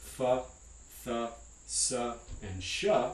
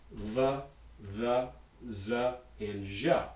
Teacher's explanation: We have voiceless and voiced fricatives at the labiodental, interdental, alveolar, and postalveolar places of articulation.